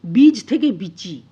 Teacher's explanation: জ টা চয়ে পরিণত হয়ে গেল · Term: বর্ণবিকার